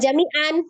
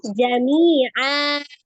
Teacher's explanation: Fathah tanwinnya dibaca fathah saja 2 harokat.